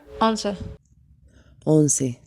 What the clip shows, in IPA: 'Õn.se